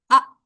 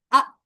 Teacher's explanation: हमजा की आवाज जरा झटके वाली होती है